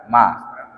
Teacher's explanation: Huruf mim itu huruf bibir, dua bibir. Ketika kita nyebut ma, bibir dua-dua ini kan rapat kan?